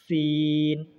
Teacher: सीन का मखरज ज़ुबान की नोक को ऊपर के चार दांत और नीचे के चार दांतों के किनारे पर लगाने से सीन अदा होते हैं